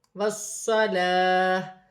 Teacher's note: لام پر کھڑی زبر ہے، ایک الف کی مقدار کھینچ کر پڑھا جائے گا